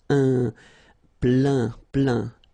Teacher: Remember this E-I-N nasal. So it goes in your nose and it's un plein, plein.